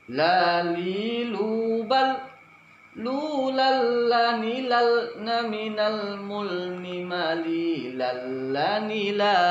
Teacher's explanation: Saya akan ulangi 3 kali supaya tidak tebal pengucapan huruf lam. Dia tipis, ujung lidah menempel pada langit-langit depan atas.